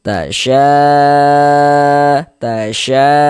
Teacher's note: 4 sampai dengan 5 harakat dipanjangkan. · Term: mad wajib muttasil